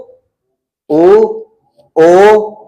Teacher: पीछे गले में वाइब्रेट हो रहा है जहां पे जीभ शुरू हो रही है वहां पे वाइब्रेट हो रहा है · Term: पश्च स्वर